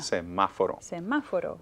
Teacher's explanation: stress is on ma, and that's the third to the last syllable